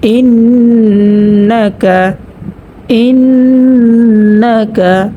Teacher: এখানে কিন্তু গুন্না হয়েছে, গুন্নাটি হচ্ছে ওয়াজিব গুন্না। হরকতের বামে নুনের মধ্যে তাসদিদ হয়েছে, তো গুন্না করিয়া পড়তে হবে।